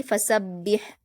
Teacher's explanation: फसब्बी, आगे देखिए बा पर हरकत जल्द पढ़ेंगे और हा पर जज्म है तो बा को हा से मिलाएंगे और यहाँ पर हा जो है वो हलक से अदा होगी। फसब्बिह, अच्छे से अदा करेंगे इसको हम।